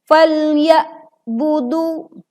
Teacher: Saat kita membaca falya budu, huruf ain suaranya menjadi tertutup, tertahan, dan ini menyebabkan berubah hurufnya menjadi huruf hamzah. Sedangkan huruf ain suaranya tetap mengalir sebagian, artinya tidak tertahan seluruhnya.